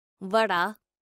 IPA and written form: ˈʋəɖaː (vada)